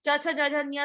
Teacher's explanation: च छ ज झ ञ सारे पैलेट में तालु में बोले जाते हैं, सब वो हैं पैलेटल साउंड्स है।